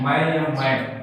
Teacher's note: इसमें अब वायु नाक और मुंह दोनों से प्रवाहित हुई है, तो ये कहलाएगा अनुनासिक